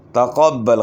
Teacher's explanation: تقبل قاف موٹا ہوگا، با کے اوپر شد ہے، خوب جماعت سے ادا کریں شد کو.